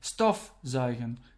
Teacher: So you put your stress on stof, so you would think it's a separable verb, but it's not.